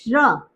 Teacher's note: इसमें श और र की आवाज आ रही है